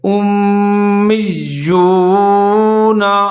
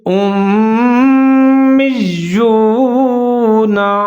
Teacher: حمزہ اور میم دونوں ملا کر پڑھیں گے، ادغام کریں گے غنّے کے ساتھ، یعنی کہ آواز کو 3 سے 4 سیکنڈ تک ناک میں لے جائیں گے۔ آگے میم کے بعد پھر یا مشدد ہے اور یا کے اوپر پیش ہے، تو میم اور یا پھر ان دونوں کو ایک ساتھ ملا کر مضبوطی کے ساتھ پڑھیں گے۔